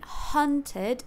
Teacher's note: is relaxed the back is not bunched up and then hunted the syllable hun is also a central vowel so the tongue will be flat and Central